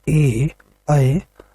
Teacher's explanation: इनका उच्चारण कंठ और तालु के माध्यम से हो रहा है। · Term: कंठ तालव्य